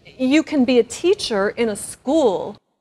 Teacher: With her statement, you can be a teacher in a school, she says the word can a bit faster. And the vowel sound changes from a, like in apple, to the schwa, a.